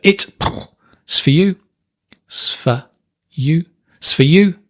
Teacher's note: The you is stressed, right?